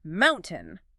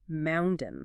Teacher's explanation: We use a glottal stop. We literally cut off the air flow in our throat down at the glottis rather than using our tongue behind our teeth. It becomes mounden.